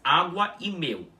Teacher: É como se você estivesse começando a pronunciar o U e logo em seguida você o terminasse de vez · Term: Um u curto